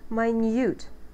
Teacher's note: we do say minute which implies that we have a second syllable stress